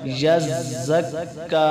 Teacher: کاف پر کھڑی زبر کو ایک الف کی مقدار لمبا کریں گے